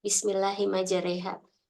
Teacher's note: khusus di ayat itu saja di mana Fatah berubah menjadi e